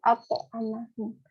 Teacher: Nah, di sini tuh bertemunya hamzah dengan to sukun. Di sini to-nya itu dibaca juga mantul karena kan to ini merupakan huruf qalqalah yang disukunkan.